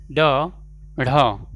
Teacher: तो वे व्यंजन जिनका उच्चारण में जीभ की जो नोक है वो झटके से तालु को छू करके वापस आ जाती है, ठीक है, इसी को कहते हैं उत्क्षिप्त व्यंजन, ठीक है।